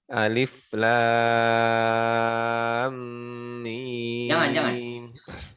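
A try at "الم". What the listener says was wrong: Jangan ditekan, tapi dimasukkan, ditahan. Panjangkan, ditahan. Panjangkan dulu 6 harokat secara sempurna. Alif lam gitu ya. Lam bukan lam kan beda. Lam sama lam mim ra. Panjangkan lam alif lam beda. Lam kan kalau itu ada tekan ya. Lam.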